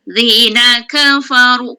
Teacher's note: ka nipis fa nipis ru tebal baris depan